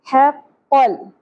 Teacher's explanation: حا وسط حلق سے, قاف کو پر پڑھیں گے, لام ساکن پہ قلقلہ نہیں ہونا چاہیے